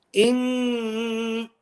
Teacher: So all of my emphasis is through my nose. In, even if I close my mouth. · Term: ghunna